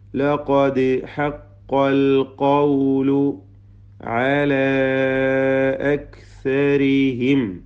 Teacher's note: ഇവിടെ ദീർഘം മദ് മുൻഫസിൽ ജായിസ് എന്നതാണ്. നാലോ അഞ്ചോ ഹറക്കത്തിൻ്റെ അളവിൽ അലിഫിനെ ദീർഘിപ്പിക്കൽ അനുവദനീയമാണ് · ദാലിന് ഖൽഖല, സുക്കൂൻ ഹറക്കത്ത് പോലെ ചലിപ്പിക്കുക. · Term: ഖൽഖല സുഗ്ര